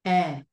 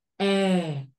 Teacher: Nó tầm 7, tầm 3 mở miệng dọc xuống là ra chữ e của người nước ngoài là chữ e nó cái âm nó hơi dài